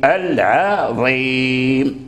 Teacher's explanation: ترقق العين ثم تفخم الضاء